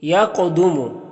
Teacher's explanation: یا قدوم، قاف یہ حروف مستعلیہ میں سے ہے تو اسے پر پڑھیں گے، اور یہ قاف حروف قلقلہ میں سے بھی ہے اور اس کے اوپر جزم بھی ہے تو قاف میں قلقلہ بھی ہوگا، یعنی موٹا کر کے بھی پڑھنا ہے اور قاف میں قلقلہ کرنا ہے، یعنی قاف کی آواز اپنے مخرج سے ٹکر کھا کے الگ ہوگی، یعنی ایک ڈبل آواز نکلے گی اس کی